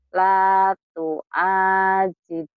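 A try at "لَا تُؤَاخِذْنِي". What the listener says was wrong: Latu akhid bukan jib. Kalau masih ketukar kha jama khil ni khil ni.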